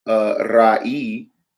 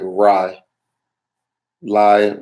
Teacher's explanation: coming before the consonant yod, the pronunciation becomes IE, as in like lie.